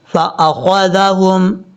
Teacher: خا حروف مستعلیٰ میں سے ہے، پر پڑھا جائے گا